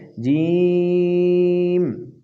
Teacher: اور جیم اس میں یا مدہ ہے، اس لیے اس حرف کو ادا کرنے میں مد ہوتا رہتا ہے